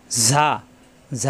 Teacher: ঝা আলিফ জবর ঝা জিব্বা নিচেতে চাপ দিয়ে 1 আলিফ টান